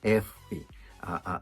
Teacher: O lábio de baixo nos dentes de cima.